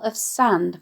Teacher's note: the hissing sibilance of the smell of sand